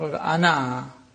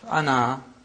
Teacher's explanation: One in pausal form, where alif is pronounced